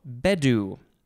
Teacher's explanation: i think the emphasis is on the first syllable